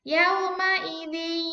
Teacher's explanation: karena bacaan idgham bi gunah, maka harus dengung.